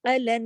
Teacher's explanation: غنہ ہوتا ہے، الن، تھوڑی دیر آواز کو غنہ کہتے ہیں، تھوڑی دیر آواز کو ناک میں چھپاتے ہیں، یہ جو الن، یہ جو آواز ہے یہ غنے کی آواز ہے